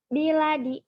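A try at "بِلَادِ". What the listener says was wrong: Biladi panjang.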